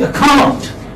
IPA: əkaunt